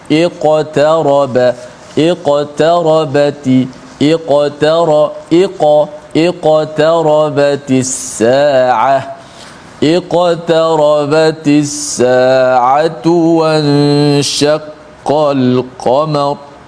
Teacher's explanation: ada qaf mati di tengah-tengah kalimah ataupun ayat ini, maka dibaca dengan qalqalah yang sughra, yang paling martabat yang paling rendah sekali.